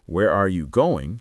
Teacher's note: The stress is on where and going and that word are just becomes tiny >> almost disappears.